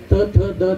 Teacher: तुमची जीभ वरच्या दातांच्या मागे जाते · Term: दंत्य